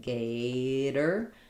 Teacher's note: that's stressed on the first syllable. That's going to be a flap. It's going to be like gator and the or is going to be an sound. · No stress on those letters tor. So that gets flapped.